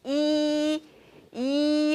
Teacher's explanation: 이 옆으로 가죠? 네, 그렇죠. 그래서 평순모음이요.